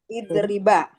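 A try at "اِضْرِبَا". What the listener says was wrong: idriba, panjangin sedikit.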